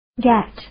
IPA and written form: ɡæt (Gatt)